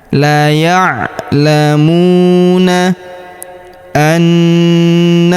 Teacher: Huruf mu kita panjangkan dua harakat karena wau sukun di depannya.